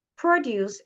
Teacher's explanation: the stress is on the first syllable, produce. It's a noun, which means fruits and vegetables.